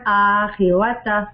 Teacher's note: آخرت تا کو لمبا نہیں کرنا